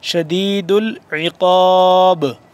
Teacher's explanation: قاف کو موٹا کر کے با آخر میں با ساکن ہو رہا ہے تو با پہ ہم قلقلہ کریں گے